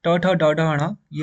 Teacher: मुर्धन्य यानी कि आपका जो जीव वाला बीच वाला भाग है वहां से बोला जाएगा